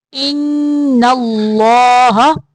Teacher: ان پہ نون مشدد کا غنہ ہوگا اور اللہ کلام جو ہے اس کو موٹا پڑھیں گے۔